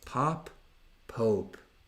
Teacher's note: Dovete proprio esagerare la coda della O